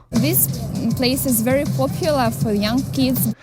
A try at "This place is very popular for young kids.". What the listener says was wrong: And oddly enough, I think she pronounced very without rolling the R until she got to popular. And she pronounced is correctly. But of course she said this and kids.